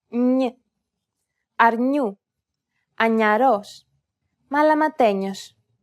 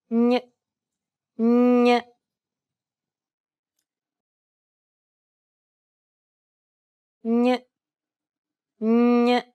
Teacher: This is also known as the Spanish N. It sounds like a combination between an N and a Y sound. English speakers can sometimes pronounce this sound when saying the word canyon or new.